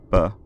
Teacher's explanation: voice box is buzzing throughout the articulation B they can be voiceless unaspirated which means that the voice box starts buzzing just after the release